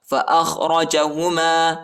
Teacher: خاء اور را کو موٹا پڑھنا ہے